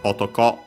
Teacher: Otoko, accent on the last syllable.